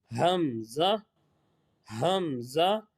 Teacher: हल्क के नीचे वाले हिस्से से अदा होता है